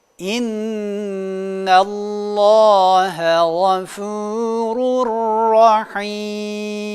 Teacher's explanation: tenvini ve nun sakini gizlemiş olacağız iptal etmiş olacağız ve ra harfini şeddeli ymiş gibi okumamız gerekiyor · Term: idğamı bila gunne